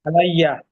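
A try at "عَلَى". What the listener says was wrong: না, এটা হবে আলা। হ্যাঁ, লামের পরে, লামের উপরে টান হবে আর কি। আলা আলা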